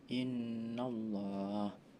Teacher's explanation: ada bacaan gunah karena terdapat nun bertasyid dibaca dengung